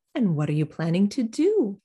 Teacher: reduce some function words and what are you planning to do do you hear all of that going quickly and lightly until we get to the focus word at the end